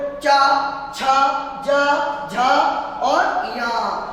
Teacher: हमारी जो जीभ है ये तालु से टकराएगी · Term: तालव्य व्यंजन